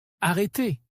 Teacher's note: Ici, le R est plus marqué parce qu'il est au début du mot.